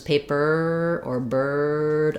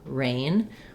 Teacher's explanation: The difference about these three and this one is that these are when R functions like a vowel. So in the word bird or in the word paper, the sound can continue. It's vocalic, versus in a word like rain, I can't really hold that. I just start in the R position and I leave, rain, versus paper or bird, I can hold on that I could hold on this one, but then it would turn into one of these symbols, rain.